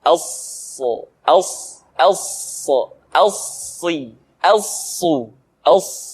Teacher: Untuk memudahkan pengucapan huruf sa, perhatikan sifat as-safir yang dimiliki oleh huruf sa, yaitu suara tambahan yang terdengar menyerupai dengan suara angsa